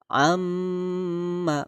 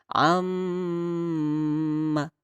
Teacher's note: membacanya dengung Hai bagaimana kita membacanya Om ma berapa Haruka Ustad harokatnya tiga jadi jangan berlebihan dan jangan terlalu sebentar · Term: ghunnah